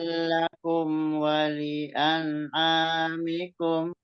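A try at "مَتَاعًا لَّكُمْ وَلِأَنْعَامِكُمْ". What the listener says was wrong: Ya, jadi taknya juga jangan kepanjangan. Di ayun aja, matobi'i. Cuman matobi'i aja itu. Mata alakum walian amikum. Nah, jadi annya diperjelas. Walian amikum.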